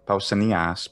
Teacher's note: Mm, Pausanias. And it's a high pitch on the iota, but it's a short vowel. And then the long vowel is final.